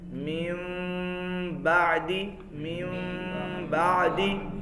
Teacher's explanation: میم بھی ہونٹوں سے ادا ہوتا ہے اور با بھی ہونٹوں سے ادا ہوتا ہے · اب اس کو ادا کرنے کا طریقہ کیا ہے کہ آپ میم کو ادا کرتے ہوئے ہونٹوں کو مکمل بند نہیں کریں گے، ٹھیک ہے؟ خشکی والے حصے کو تھوڑا سا ساتھ ملا کے، پھر تھوڑا سا اخفا کر کے، اخفا کے فوری بعد تری والے حصے کو مکمل ملا کے با کو ادا کر دینا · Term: اقلاب